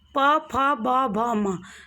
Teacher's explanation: जब हम प वर्ग के वर्णों का उच्चारण करेंगे तो दोनों होठ आपस में एक दूसरे को स्पर्श करेंगे।